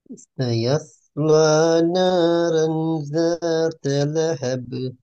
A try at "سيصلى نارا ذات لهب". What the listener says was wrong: ذات لهب. போதா ஹேர்ட சவுண்ட் கொஞ்சம் மாறுது. ذات لهب. ه هب.